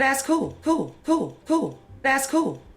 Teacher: that's an L turning into a vowel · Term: l vocalization